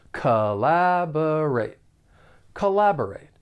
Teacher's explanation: the verb has four syllables and the stress is on that second syllable the first and third syllable have that unstressed schah sound that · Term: unstressed schwa sound